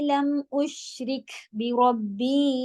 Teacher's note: شین میں اش والی ساؤنڈ ایک رہتی ہے، وہ رک، کاف میں ہمس ہوگا، ری باریک ہوگا، زیر کے ساتھ ہے